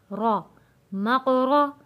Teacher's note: रॉ को भी मोटा और आवाज़ को भारी कर कर पढ़ेंगे।